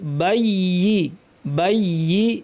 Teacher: ইয়া তাসদিদ আছে, একটু জোর দিয়ে যাব, কিন্তু দুইটা ইয়া যেন স্পষ্ট হয়।